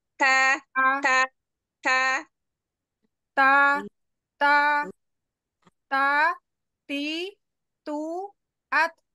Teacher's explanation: ta tidak terlalu kuat ya Ada hams di situ